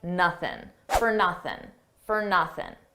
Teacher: notice how I dropped that G sound at the end of nothing